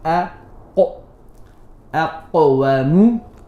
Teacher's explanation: The last one, qaf with a sukoon, has qalqala.